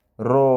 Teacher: ኦ ሚል ኦ አፋችን ክብ ይሆናል ኦ ስንለው ሮ ስንለው አርሱ ክብ ይሆናል። ለምን አናባቢው ኦ ስለሆነ